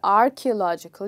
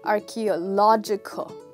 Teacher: So the catch here is that this word is stressed on lodge